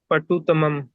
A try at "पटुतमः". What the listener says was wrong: नहीं सिर्फ तम, पटु तमह।